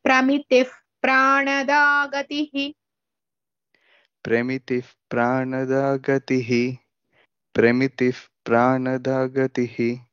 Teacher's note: there are no మహాప్రాణాస్ here all are అల్ప ప్రాణాస్